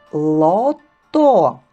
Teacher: кінчик язика у верхніх різців повітря виходить з ротика тепле голосові зв'язки працюють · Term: твердий звук